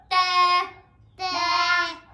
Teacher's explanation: ثناء ثناء ان دو دانتوں کو کہتے ہیں. زبان کی نوک جب ثناء کی جڑ کے ساتھ لگے تو ہم سختی سے پڑھیں گے